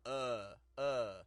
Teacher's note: our tongue's a little lower down in the back a little bit more of a uh relaxed lazy sound